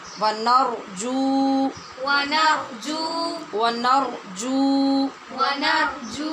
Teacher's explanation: جیم کے بعد واو مدہ ہے، اس لیے اس کو بھی لمبا کریں گے